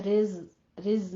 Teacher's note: वलहुम में इजहार शफी करना है। रिज, रिज में रॉ बारीक है, जय को सीटी की आवाज के साथ पढ़ना है